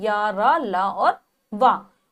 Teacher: इन व्यंजनों का जब उच्चारण है स्वर और व्यंजनों के बीच में होता है, यानी कि हमारी जो जिह्वा है वो किसी भाग को स्पर्श नहीं करती, वो बीच में स्थिर रहती है। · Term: अंतस्थ व्यंजन